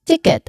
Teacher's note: the final t is usually a soft soft stop · the rhythm of the word is stressed and then unstressed